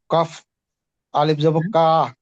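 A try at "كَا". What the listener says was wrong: কাফ এটা কফ না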